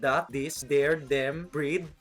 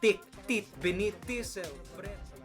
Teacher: Also worth noting, there's no TH. It's either D sound like that, this, there, them, breed, or T sound like tick, tit, beneath, tisel, bread.